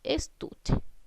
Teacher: La palabra estuche, estamos cargando la voz en la sílaba tú. La sílaba tú está ubicada en la penúltima sílaba. · Estuche es una palabra grave porque estoy acentuando la voz en la sílaba tú, que es la penúltima sílaba.